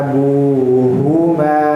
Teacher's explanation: abu panjang dua harakat ada karena ada wau sukun di sana